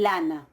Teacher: Entonces, por ejemplo, con las nasales, ¿sí? Tenemos la nasal, tanto la M como la N, en contacto con la laringal, eso va a dar ma o na.